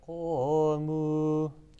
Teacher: It's thick because qaf is a thick letter. permanent thick.